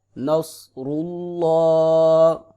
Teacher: صاد کو موٹا پڑھیں گے، را کو بھی پر کر کے پڑھیں گے، لفظ اللہ کو بھی موٹا کر کے پڑھیں گے